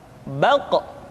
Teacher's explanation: Diucapkan dengan suara yang tebal dan dalam posisi sukun, maka terdengar pantulan suara. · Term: huruf Qaf